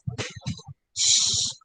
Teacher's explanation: This sound is produced with the tip of the tongue and the postalveolar region a little behind the alveolar ridge. The air is let loose, producing a hissing sound.